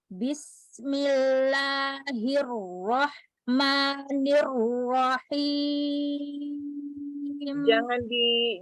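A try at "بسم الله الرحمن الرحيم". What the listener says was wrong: Jangan dihentak ya. Nah, itu rahma dialirkan lagi.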